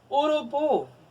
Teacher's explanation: Bu é a sílaba tônica